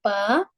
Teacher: دونوں ہونٹوں کے تر یعنی گیلے حصے کے ملنے سے با ادا ہوتا ہے۔